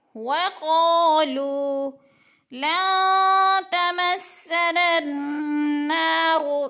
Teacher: لن پہ جو ہے نا غنہ ہو رہا ہے، نون ساکن کے بعد تا حروف اخفاء میں